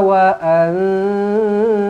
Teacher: nun kosong bertemu dengan ta, ikhfa hakiki dengungkan 2 harakat.